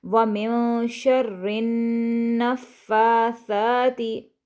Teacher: نون پر غنہ کرنا نہیں بھولیں گے. شَرِّ النَّفَّاثَاتِ، نا کے اوپر چونکہ زبر ہے اس کو ہم کھینچیں گے نہیں، البتہ فا اور سا کو ہم کھینچیں گے کیونکہ ان کے دونوں کے اوپر کھڑی حرکت ہے.